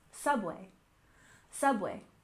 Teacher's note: And next we have subway. stress the first syllable.